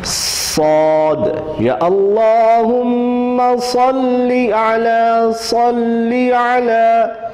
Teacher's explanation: یہ صاد جو ہے دانت بند کر کے اور سیٹی کے ساتھ اس کو ادا کرنا ہے، لیکن صرف یہ دھیان رکھا جائے کہ یہ سین کی نسبت موٹا حرف ہے اور اس کو تھوڑا موٹا کر کے پڑھا جائے، جیسے صاد، یا اللہم صلی علی، صلی علی، صلی علی محمد و آل محمد۔